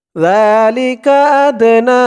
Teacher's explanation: এখানে 3 আলিফ টান হবে মধ্যে মুনফাসিল